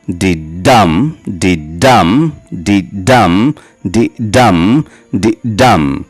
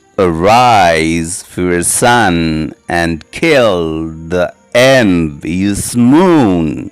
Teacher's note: It consists of a line of 5 iambic feet, 10 syllables, 5 unstressed and 5 stressed.